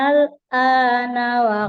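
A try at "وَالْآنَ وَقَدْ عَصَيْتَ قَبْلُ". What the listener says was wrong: harakat kurang Bu.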